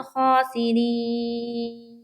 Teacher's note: नून के ऊपर वक्फ करेंगे तो वहाँ पर नून को साकिन बना देंगे